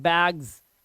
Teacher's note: ये क्या है इसे पढ़ते हैं बैग्स इसे बैक्स नहीं पढ़ते बैक्स सा नहीं आता है लास्ट में ये जस आता है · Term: ज का साउंड